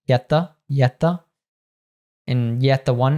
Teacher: word ending a t and the next word beginning with a th will just drop the T and just keep the th